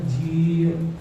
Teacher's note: ਸੋ ਜਿਵੇਂ ਜੇ ਅਸੀਂ ਜੀ ਸ਼ਬਦ ਦੇ ਵਿੱਚ ਐੜੇ ਦਾ ਉਚਾਰਨ ਕਰਨਾ ਹੈ ਤਾਂ ਉਹਦੇ ਵਾਸਤੇ ਸਾਨੂੰ ਜਿਹੜੀ ਜੱਜੇ ਦੇ ਨਾਲ ਬਿਹਾਰੀ ਲੱਗੀ ਹੈ ਉਹਨੂੰ ਥੋੜਾ ਜਿਹਾ ਲੰਬਾ ਕਰਕੇ ਪੜ੍ਹਨਾ ਪਏਗਾ। ਸੋ ਇਹਦਾ ਉਚਾਰਨ ਹੈਗਾ ਜੀ। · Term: ਦੀਰਘ ਮਾਤਰਾ